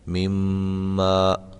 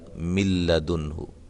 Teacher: اس میں غنہ کیا گیا ہے مما، اور اس میں غنہ نہیں کیا گیا مل لدنہ